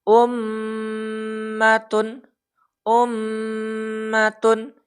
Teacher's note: jadi cara membacanya dengan mendengungkan huruf mim dan Nun bertasdid di Pangkal hidung selama dua atau tiga harakat yaah ditekan dua atau tiga harakat Nah misalkan seperti ini Ini · Terjadi dengung di Pangkal hidung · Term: bacaan gunah, bacaan gunnah